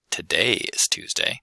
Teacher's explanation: the contrastive stress on today indicates that this is important information to the listener